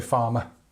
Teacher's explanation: But in British English, the R sound tends to be a bit softer. In fact, we use the schwa for this.